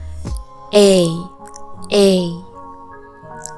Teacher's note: Seperti percampuran antara E sama I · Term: diphthong